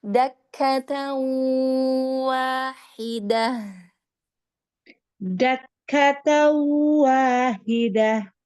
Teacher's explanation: agak sedikit sengaunya dimasuk ke rongga hidung sedikit ya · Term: Bigunnah